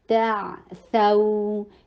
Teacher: تا اور عین کے اوپر حلق سے ادا کیجیے عین کو، تعثوا، یہ لین ہے، ٹو حرکہ لانگ کریں گے